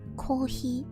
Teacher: i like how coffee in japanese sounds like they bypass the f's · japanese people don't actually have the f sound they don't have a um labiodental fricative um at all in